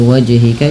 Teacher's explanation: wajhika juga harus memantul karena ia bacaan qalqalah